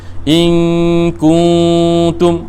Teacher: kah depan bunyi ku, bila dengung bunyi kung, ta depan bunyi tu.